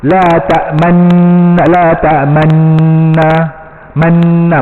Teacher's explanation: La ta'manna, manna, macam biasa, macam nun biasa je, tak ada muncung, tak ada ram